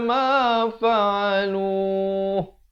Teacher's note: Hujung masuk ha. Ha makhrajnya di pangkal kerongkong.